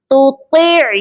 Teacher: عین کی آواز حلق کے درمیان والے حصے سے آتی ہے